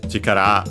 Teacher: Chikara, accent on the last syllable, means force, as in strength.